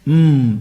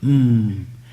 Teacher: it starts from mouth open ah and it ends up with mmm and in that mmm the nose should take part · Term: nasal sound